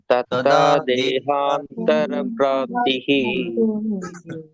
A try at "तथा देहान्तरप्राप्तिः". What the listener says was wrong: பிராப்திஹி இல்ல, பிராப்தேர். பிராப்திர் ரா இர். ததா தேகாந்தர பிராப்தேர். ததா தேகாந்தர பிராப்தேர்.